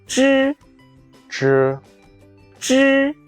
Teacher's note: The front of your tongue initially touches the hard palate.